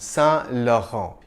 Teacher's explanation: No, monsieur, c'est Yves Saint Laurent. The two N's aren't really pronounced. You just nasalize the preceding vowel sound